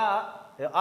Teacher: तो आपको पता है, बड़ा जब आप कहते हो, अब इससे ज्यादा कुछ कर नहीं पाओगे, क्योंकि बड़ा आ ऐसा स्वर है जिसमें आपका मुंह पूरी तरीके से खुलता है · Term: विवृत स्वर